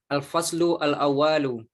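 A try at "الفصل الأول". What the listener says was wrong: uanya pendek ya. Al-faslul awwal. Jangan panjang uanya. Al-faslul awwal.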